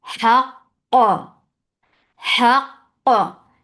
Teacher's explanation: The first cough will get shidda, and the last cough will get qalqala.